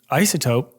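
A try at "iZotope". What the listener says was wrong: No, it's Isotope with a Z.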